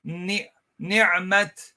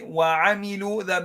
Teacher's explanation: The most incomplete ghunnah. This is the shortest ghunnah of all, right? Now, that means the noon and meme with vowels without any shadda on them fall into this category.